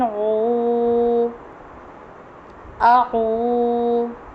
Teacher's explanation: تو عین سیدھا پیش واو ساکن عو، واو کے اوپر جزم ہے، عین کے اوپر پیش ہے، تو حروف مدہ کے رول سے اسے ایک الف کے برابر پڑھیں گے